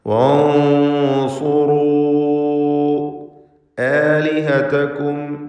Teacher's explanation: ആലിഹതകും എന്നതിലെ സാക്കിൻ തമീമിനെ ഇൽഹാർ ഷഫവി നൽകി മണിക്കാതെ വെളിവാക്കണം.